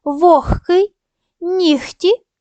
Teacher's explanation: лише г перед глухими вимовляють як х